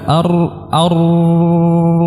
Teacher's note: bergetarnya lidah pada huruf ro dengan getaran yang kecil yang ringan disebabkan apa [Musik] disebabkan makhrajnya dia sempit ya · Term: sifat takrir